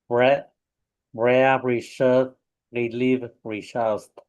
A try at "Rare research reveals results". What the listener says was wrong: Okay, so the Z with the results. That S sound becomes a Z.